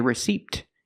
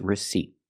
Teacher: remember receipt the p is silent